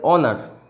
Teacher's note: কীরকম যদি বলি, এটার উচ্চারণ হচ্ছে অনার, উচ্চারণ হচ্ছে অনার, এর আগে কিন্তু অ্যান বসবে, কারণ কি এর উচ্চারণটা অ দিয়ে শুরু হচ্ছে। যতই এইচ থাকুক না কেন, এইচটা অ এর উচ্চারণ নিচ্ছে, হয়ের উচ্চারণ নিচ্ছে না। এটা উচ্চারণ কখনই হনার এটা হবে না।